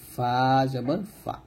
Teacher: ফাটা উপরে দুই দাঁত নিচে ঠোঁটের পেটের সঙ্গে লাগিয়ে ফাটা বাতাস বের করে পাতলা উচ্চারণ করতে হবে, ফা জবর ফা।